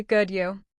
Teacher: We don't even say the full and you. We just say you with rising intonation.